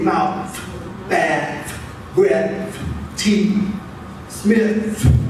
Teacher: inter Dental tongue between the teeth · that friction that you hear is the retracting of my tongue as I place it between the teeth to say mouth, back, breath, teeth, Smith. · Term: interdental friction